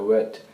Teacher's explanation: he's saying wet for vet so that V becomes a w